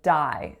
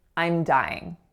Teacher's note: So a D, alveolar, going into a really open, moving vowel, I. Then we take the end of that moving vowel, that y component, and we link it over to our ing, ing, so it sounds like ying, dying.